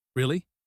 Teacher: drawn out slow this means skepticism